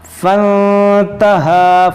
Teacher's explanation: یہ الف کو ہم نہیں پڑھیں گے، یہ فا نون سے ملا دیں گے